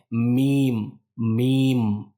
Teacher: तो मीम को सिंपल सा हम अपने दोनों होठों को मिला करके यानी जो दोनों होठ हैं उसको हम मिला करके हम अदा करते हैं मीम मीम और इसकी जो आवाज है वो नाक में भी जाती है